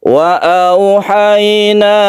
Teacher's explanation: ini dilemeskan ya, karena waw sebelumnya fathah, ya sebelumnya fathah ini harus lemas